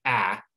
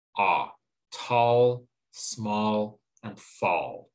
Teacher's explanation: they don't produce the short a sound which would be a instead they produce a short o sound which is ah